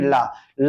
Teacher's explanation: जीभ जो है खड़ी हो जाती है और उसमें क्या होता है, जो वायु है साइड से निकल जाती है, इसलिए इसको क्या बोलते हैं, पार्श्विक ध्वनि बोलते हैं, क्या बोलते हैं, पार्श्विक ध्वनि।